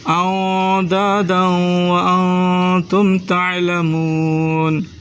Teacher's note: أندادا، حمزہ کو نون ساکن سے ملا، غنہ کریں. دال کو واو مشدد سے ملانا ہے، غنہ کرنا ہے. ادغام مع الغنہ، اس کو کہتے ہیں ادغام مع الغنہ.